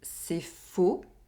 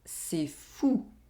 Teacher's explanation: We have the [o] sound in the first sentence, and the [u] sound in the second sentence.